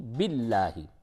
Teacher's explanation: لام کو باریک کریں گے کیونکہ لفظ اللہ کے لام سے قبل زیر ہے تو باریک ہوگا